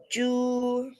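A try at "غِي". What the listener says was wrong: Jew, not Jew. What is the first sound of Ghain? You said Jew. Jew with Jim.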